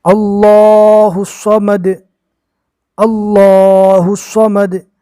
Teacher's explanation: اس میں اللہ کا لام بھی پور ہوگا، صاد بھی پور ہوگا